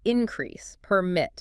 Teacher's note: Right, increase or pyramid. But when it shifts to a verb, the stress moves to the second syllable